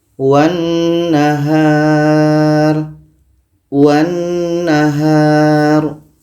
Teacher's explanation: Maka lam ini tidak kita baca karena wa ini terus melompat ke na, terus masuk ke na. Kita baca, wan nahar. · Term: idgham syamsiyah